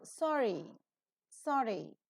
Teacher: the tip of the tongue goes very close to the post alveolar region frictionless and continuant that is the reason why we can pronounce the sound ER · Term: frictionless continuant